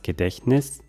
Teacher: Das T hört man hier kaum.